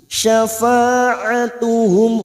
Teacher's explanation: mim sukun dibaca jelas tanpa mendengung, idhar safawi, mim sukun bertemu shin.